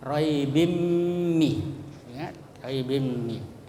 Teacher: Idgham itu artinya dimasukkan atau ditasdidkan, ya, disatukan huruf tanwin dengan mim. Ya, cara membacanya tanwin itu dimasukkan menjadi satu, ya, dengan huruf mim atau ditasdidkan dengan mendengung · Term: idgham bigunnah